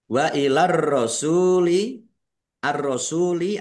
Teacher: alif lam samsiah karena tidak dibaca langsung masuk ke huruf berikutnya yaitu ro.